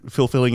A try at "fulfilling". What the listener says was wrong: You're saying fulfilling, and to me it sounded like you said filth-filling. Filth-filling.